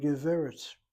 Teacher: Notice where the accent is on the first syllable, not on the last.